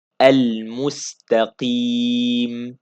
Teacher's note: madd arid li sukun two beats and clear this meem.